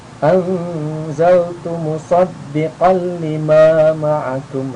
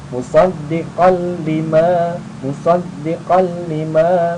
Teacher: Nah, karena idgham bila guna itu dimasukkan tanpa mendengung, maka ya ini tanpa mendengung cara bacanya.